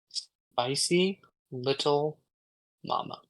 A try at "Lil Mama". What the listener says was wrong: It's Lil Mama. Yeah, you are pronouncing a little too much.